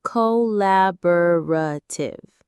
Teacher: Co, la, bo, ra, tiv. The stress is on that second syllable, la, collaborative.